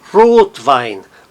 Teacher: as duas palavras que estão compondo a nova palavra mantém a sua sílaba tônica mas a primeira fica um pouquinho mais forte · O Rot é nitidamente mais forte que o Wein, mas o Wein mantém a sílaba tônica